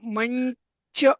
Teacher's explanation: पण मंच मध्ये थोडासा न चा पण उच्चार होतो